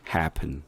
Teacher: happen이면은 푼에다가 액센트 붙였잖아요. 잘못된 거죠. 액센트 붙이지 말고 그냥 아주 가볍게